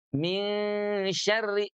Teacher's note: Min syari tidak juga min syari tapi di tengah lidahnya. Min syarri bunyinya di tengah lidah. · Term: ikhfa